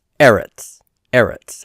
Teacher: the stresses on the first syllable so it's not final syllable stress · the word for earth or land is eretz, and the stress is on the first syllable, so it's not final syllable stress here in either of these, and so that's why I have the overt accent there.